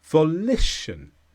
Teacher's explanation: The stress is on li.